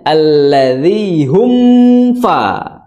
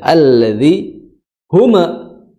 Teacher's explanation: ketika membaca ditahan dulu hum ketika sukun mimnya. Nah, ketika lepas itu langsung menuju ke huruf fa.